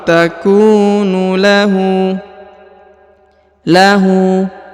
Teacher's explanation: karena di depannya terdapat wau sukun au takunu lu huruf hu dipanjangkan dua harakat karena berharakat u Terbalik